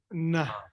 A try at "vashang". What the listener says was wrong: No, na is a dental. This is not a dental. Yeah, a ga. So say ga, ga. Your throat closes towards the back. And now what's the nasal that comes from back there? Nga, nga. Okay, so really, this should be vashang.